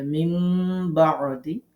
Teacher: নুন সেকেন্ডের পরে বা আসছে এজন্য নুন টাকে মিম দ্বারা পরিবর্তন করতে হবে গুন্না করতে হবে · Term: ইকলাফের গুন্না